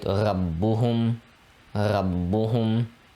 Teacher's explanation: we're pausing on the ba and pronouncing it twice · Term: shadda